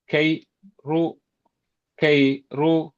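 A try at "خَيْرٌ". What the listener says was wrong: ரெண்டையும் உடைக்க வேணாம். கை ரூ கை ரூ என்று உடைக்கிறது இப்ப இல்ல. கை ரூ அது பல நீண்டுபடுது. கை ரூ அல்ல.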